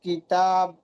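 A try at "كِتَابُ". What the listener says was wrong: না, কিতাবু বললে হবে না তো ভাইজান। টানটা কোথায়, সেই টানটাই পড়েন। খাড়া যাবার কোন মাত্রার মতো টান দিয়ে পড়তে হয়?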